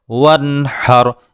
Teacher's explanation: نون ساکن کے بعد حا حروف حلقی میں سے ہے، اس لیے نون کا اظہار کیا گیا ہے۔